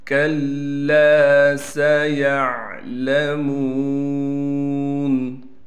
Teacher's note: سیعلمون، سین میں سیٹی نکالیں گے، یا کو عین سے ملائیں گے، عین کو صاف کر کے گلے سے نکالیں گے